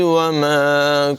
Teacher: وَمَا یہاں پر مد منفصل ہے، اس کو بھی لمبا کر کے پڑھیں گے